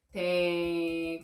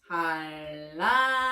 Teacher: 니은이 리을과 만나서 유음인 리을과 바뀌고 있어요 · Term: 유음화